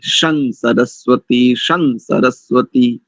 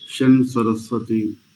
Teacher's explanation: शन्नो आप्या शन्नो आप्या बहुत बढ़िया एक स्थान पर देखिए बस भवंतु के बाद जो सकार के ऊपर अनुस्वार लगा ना उस अनुस्वार का मकार उच्चारण नहीं करेंगे क्योंकि आगे दंत सकार है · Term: नकार उच्चारण